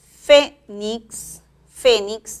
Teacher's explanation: lleva la mayor fuerza de voz en la primera sílaba